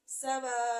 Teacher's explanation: اس کو 5 الف کے برابر لمبا کھینچ لیں گے